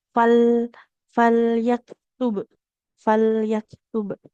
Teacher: tepi lidah yang bagian depannya nempel ke gusi, maka pastikan lidah dan gusi itu tetap saling menempel. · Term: huruf lam